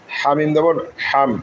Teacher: হা গলার মাঝখান থেকে উচ্চারিত হবে।